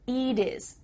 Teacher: Here, the final T is changing to a D.